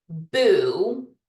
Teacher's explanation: if you say the word boo you start with your lips together and they're already kind of rounded for the ooh sound